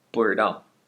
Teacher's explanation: you can take the 知 and completely replace it with an Erhua 不 知 道. You have to say it relatively quickly.